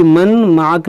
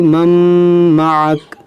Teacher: मीम पर ज़बर है, नून साकिन है और फिर मीम है, तो यहाँ पर भी इदगाम होगा